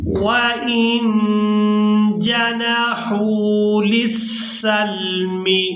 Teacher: نون ساکن پر اخفا کریں گے، یعنی نون کی آواز کو ناک میں چھپا کر ادا کریں گے۔ وَإِن جَنَحُوا، ہا واو پیش، حو کھینچ کر ادا کریں گے کیونکہ یہ واو مدہ ہے۔